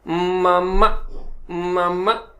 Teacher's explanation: होंठ आपके थोड़े से क्लोज हो गए लेकिन आवाज नाक से निकलना शुरू हुई, मामा, मामा, इस तरीके से के साउंड जो है वो निकलना शुरू हो जाएगी। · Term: एम का गुन्ना